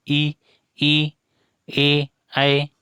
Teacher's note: उच्चारण के समय जीभ का आगे वाला भाग ऊपर उठता है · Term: अग्रस्वर